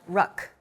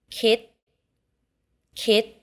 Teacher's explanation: all final consonants in thai are unreleased